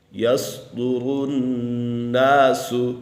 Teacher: نون مشدد ہے، نون مشدد میں ہمیشہ غنہ ہوتا ہے